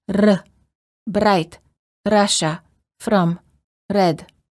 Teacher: Many languages have what is called a rolling R, where the tip of the tongue touches the gum ridge, similar to the D sound, but with a quick and repeated motion